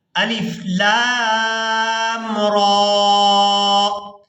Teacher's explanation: الف کو یہاں پر ہم بغیر کھینچے ہی ادا کریں گے، لام کو مد کی وجہ سے اور را کو کھڑی زبر کی وجہ سے کھینچ کر ادا کیا جائے گا